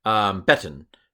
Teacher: Seglets accent the second to last syllable, I believe.